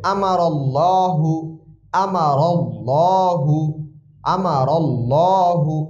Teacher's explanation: আল্লাহ শব্দের আগে যদি জবর দিয়ে আল্লাহ শব্দ শুরু হয়, এক্ষেত্রে অবশ্যই মোটা করে পড়তে হবে।